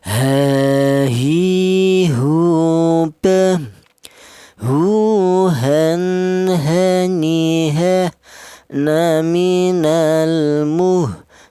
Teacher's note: Huruf H ini keluarnya huruf berasal dari pangkal tenggorokan atau tenggorokan bagian bawah ya.